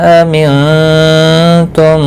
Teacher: نون ساکن کے بعد حروف اخفا کا تا آیا ہے، اخفاء حقیقی ہوگا، گنہ کے ساتھ پڑھیں گے.